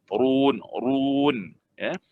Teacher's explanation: Ra bila baris hadapan ataupun dhammah ini dia jadi ra tafkhim, tebal.